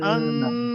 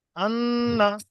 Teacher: জিভটা hold করে দিচ্ছি, জি নাকের ভিতরে আওয়াজটা নাকে উঠে যাচ্ছে, এটাই হচ্ছে গণনা।